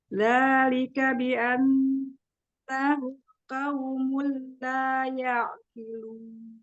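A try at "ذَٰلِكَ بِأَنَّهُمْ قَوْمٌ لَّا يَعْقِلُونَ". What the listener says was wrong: Qafnya coba mau naikkan lagi pangkal lidahnya. Sempurnakan makhrajnya huruf qaf coba. Kayaknya dilin ya. Tadi juga au. Mi. Au. Pangkal lidahnya coba naikkan, menyentuh. Yang mana? Makhrajnya di mana? Coba huruf qaf.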